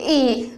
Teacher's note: कंठ से भी आ रहा आवाज और तालु भी सट रहा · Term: कंठ तालु